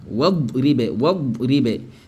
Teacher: le hamzatul wasl qui est ici là est négligé dans la lecture, dans la prononciation. Ça va? Tu fais comme si il n'existait même pas.